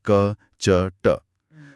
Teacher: अघोष ध्वनियां बिना कंपन के निकलती हैं